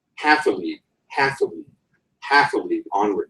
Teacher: a three-part foot the first being stressed last two unstressed